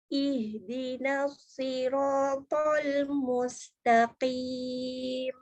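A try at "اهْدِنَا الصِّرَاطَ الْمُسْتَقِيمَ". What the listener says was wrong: Oke, bagus.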